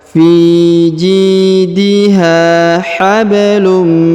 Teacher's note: huruf ba berharakat sukun maka dipantulkan atau diqolqolahkan